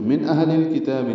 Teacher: من اہل الکتاب، نون ساکن کے بعد حمزہ آنے کی وجہ سے اظہار ہے۔ اہل میں ہا ساکن ہے، اس پہ ہمس ہوگا، ہا اقصی حلق سے ادا ہوگا، حمزہ بھی اقصی حلق سے ادا ہوگا۔